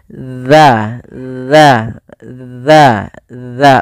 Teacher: Yang tepat adalah bagaimana kita melafalkan huruf zal, yaitu ujung lidah kita menempelkan dengan gigi seri atas